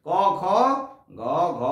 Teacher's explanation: ক, খ, গ, ঘ, এই চারটে হলো কণ্ঠ ব্যঞ্জন।